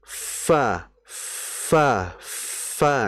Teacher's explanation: bibir bawah bagian dalamnya itu dinaikkan, ditempelkan ke gigi seri atas. Nah, kalau ketika mau nempel itu nanti akan ada desisan f. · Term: huruf fa